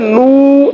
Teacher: इसमें ख्याल रखिएगा नाक में आवाज ना जाए, आवाज हमने बाहर फेंकनी है, होल फेंकनी है होंठ को गोल करते हुए, ठीक है।